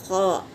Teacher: खौ खरखरी आवाज़ से निकलेगा